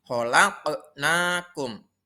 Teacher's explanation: cara membacanya yaitu harus dipantulkan huruf qaf yang mati itu